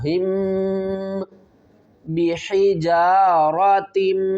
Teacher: मीम साकिन के बाद अगर बा आ जाए तो हम मीम के ऊपर गुन्ना करके पढ़ेंगे। इस तरह हिम बिहिजारतिम, बा जेर बी, हा जेर ही, जीम अलिफ ज़बर जा, बिही जा, रा ज़बर रा, ता को हम मीम के साथ मिलाएंगे, मीम मुशद्दद या गुन्ना भी करेंगे।